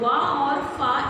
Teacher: वा और फा ऐसे वर्ड हैं जिनमें ऊपर के दांत तथा नीचे के ओष्ठ का प्रयोग किए जाते हैं